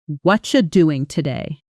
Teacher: That blending where what are you collapses into something close to watcha is called connected speech.